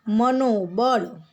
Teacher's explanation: વિસર્ગ અને વિસર્ગ પહેલાં અ છે અને વિસર્ગ પછી આપણને ઘોષ વ્યંજન મળ્યો એટલે બંનેનો ઓ બની ગયો.